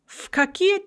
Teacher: when we say V before a voiceless consonant like K, it becomes Fa.